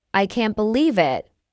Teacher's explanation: If you say I can't believe it, with a rising intonation, it shows surprise. If you say I can't believe it, with a falling intonation, it shows disbelief or disappointment.